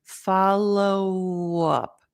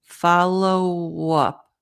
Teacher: don't stop the O keep keep it going so it goes into the up